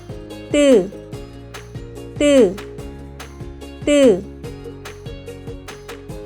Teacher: When pronouncing, 뜨, pronounce 드, while tensing your throat. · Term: tensed sounds